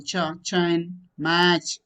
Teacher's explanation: There is complete closure, but not sudden release, but slow release. Two qualities of above categories are seen in this set. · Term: affricates